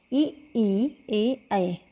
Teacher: इनको बोलने के लिए हमें हमारी जीभ का जो है अगला पार्ट जो है अगला हिस्सा काम करता है, ठीक है, इसलिए इनको अग्रस्वर कहते हैं।